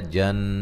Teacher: جن نون مشدد پہ غنہ ضروری ہے